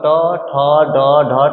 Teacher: री, र, मूर्धन्य स और ट वर्ग, तो ये सब आपको किससे बोला जाएगा भाई? मूर्धा से बोला जाएगा।